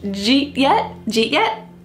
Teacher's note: we're dropping did and we're keeping J and then eat